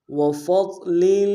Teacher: ضاد موٹا حرف ہے، موٹا ادا کریں گے